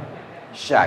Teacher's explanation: Kalau sya itu memang tengah lidah, tengah lidah tempelkan ke langit-langit mulut atas, sehingga ketika dilafazkan anginnya menyebar, tersebar sya gitu.